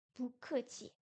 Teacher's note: Il change de ton lorsqu'il précède une syllabe au quatrième ton. Donc quand on a deux 4, le premier devient un 2. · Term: deuxième ton